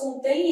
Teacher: esse M vai ter som semivocálico. Então, vai ter som de I. Contém vogal, som de semivogal.